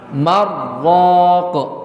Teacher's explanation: kalau tidak dipisah yang namanya nun sukun bertemu dengan ro itu memiliki hukum apa idgham Bila gunah